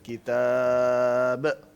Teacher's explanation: کتاب پہ رکے ہیں تو قلقلہ با پہ لازمی ہوتا ہے